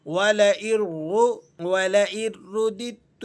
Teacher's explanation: اولاً تو آپ نے را کو پر کرنا ہے، رو کر کے پڑھ دیتے ہیں، رو نہیں پڑھا جائے گا، آپ نے اس کو پر کر کے، کیونکہ را پر پیش لگا ہوا ہے اور پیش والی را پر کر کے یعنی موٹی کر کے پڑھی جاتی ہے